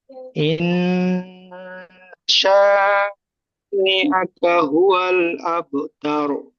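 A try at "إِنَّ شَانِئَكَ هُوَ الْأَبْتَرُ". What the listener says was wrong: মাশাআল্লাহ, খুব সুন্দর পড়েছেন জি, খুব সুন্দর।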